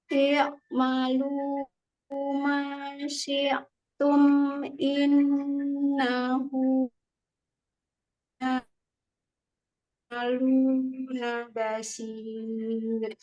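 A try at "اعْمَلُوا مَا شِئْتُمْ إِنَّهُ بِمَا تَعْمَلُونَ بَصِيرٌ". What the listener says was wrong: Ini lumayan ainnya tapi berubah huruf hamzahnya jadi ain. Nah, itu nggak boleh. Harus paham ya, ini ain sukun. Ini hamzah sukun. Tidak boleh bunyinya sama, oke?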